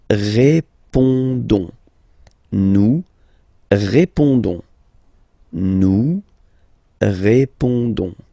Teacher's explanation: Don't pronounce the final S.